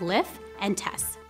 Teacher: Consonant cluster reduction, where multiple consonants at the end of a word are simplified into one. So for example, lift and test might sound like lift and test.